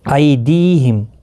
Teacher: ای یالین ہے، تھوڑا نرمی کے ساتھ کھینچ کر ادا کریں